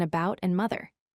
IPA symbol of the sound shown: ə